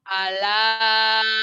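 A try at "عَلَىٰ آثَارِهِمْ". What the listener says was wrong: A-nya panjang. Ala a mad wajib mad badal ya. A-nya panjang. Ala asarihim. Asarihim.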